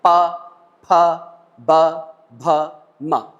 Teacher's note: हमारे दोनों ओठ आपस में चिपक जाते हैं